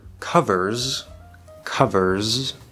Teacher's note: can be a little more difficult in the word covers covers we're going from er to z spelled with an s but it's a z sound